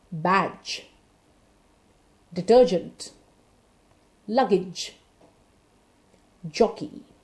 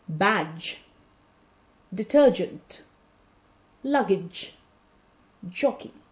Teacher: It is a voiced sound. It is also a palato-alveolar sound. However, it's an affricate. It's a sudden sound, not a continuous sound like the Z and the J.